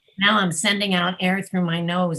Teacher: Instead of air coming out of my mouth, it's all coming out of my nose, and it sounds very nasal. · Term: nasal voice